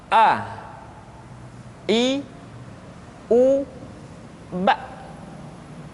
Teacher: Yang pertama adalah huruf A. Makhraj ketika mengucapkan huruf A berada pada tenggorokan yang terjauh.